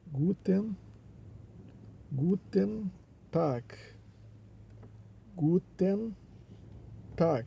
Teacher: Esse G ali no final de Tag, tem o som de K.